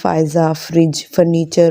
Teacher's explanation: اوپر والے دانتوں کی نوک نیچے والے ہونٹ سے لگتی ہے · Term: فا کا مخرج